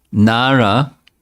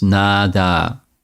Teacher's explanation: so nara becomes nada in local bengali language or speech